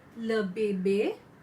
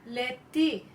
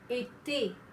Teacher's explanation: Now this alphabet E as in English, alphabet E in English, in French it is pronounced as E. When it has got the acute accent, the sound changes from E to A.